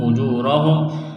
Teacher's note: کے برابر کھینچنا ہے، یعنی واو ساکن سے پہلے پیش ہے، را کے اوپر زبر ہے تو را کو موٹا کرنا ہے